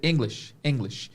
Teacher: Com CH bem morrendo no final